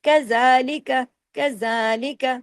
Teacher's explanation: زال پہ کھڑی زبر ہے، الف کے برابر کھینچیے